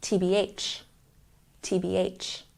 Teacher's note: here but let's make sure we're pronouncing the letters correctly TB when we use the slang term we put the stress on the last syllable